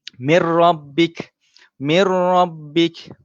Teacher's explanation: Yang lain semua dengung dan memasukkan, tetapi dalam perkataan ini sahaja huruf lam dan juga ra sahaja kita memasukkan tanpa dengung. Okay, jadi bacaan dia ialah mir rabbik.